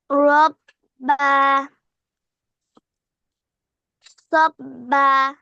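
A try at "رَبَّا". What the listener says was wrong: বা টান দাও কেন টান ছাড়া পড়ো। টান আছে নাকি ওখানে? না, সাব্বা হয় না, সব্বা।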